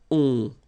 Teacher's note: Okay, and then the ending for il, elle will be ont. You don't pronounce the final t, so you get the nasal on.